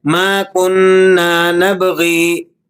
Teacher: غین کی زیر کو ذرا سا کھینچ کر وقف کر دیتے ہیں، جو کہ درست نہیں ہے۔